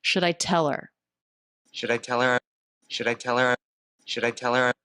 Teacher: The D is a flap sound because it comes between two vowels or diphthongs. The L is silent here.